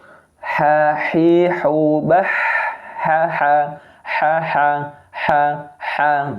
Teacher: huruf ha adalah hamas, yaitu nafasnya berjalan keluar. Nafas berjalan keluar.